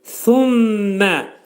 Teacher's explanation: Sə pəltək, dil iki dişin arasına xəfif şəkildə girərək.